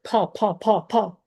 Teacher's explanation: আগে আমি বাতাস বের করতেছি না মুখ দিয়ে, আগে আমি ফ উচ্চারণ করতেছি, এবং এটার পিছে পিছে বাতাস বের হচ্ছে